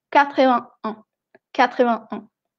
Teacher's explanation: no se dice la consonante T en el 81